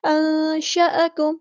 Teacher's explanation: انشأکم، نون ساکن کی آواز کو ہمیں یہاں چھپا دینا، اخفا ہوگا. حمزہ کی آواز واضح ادا کرنی ہے. اور کاف باریک، میم ساکن پر اظہار شفوی ہوگا، ٹائم نہیں دینا.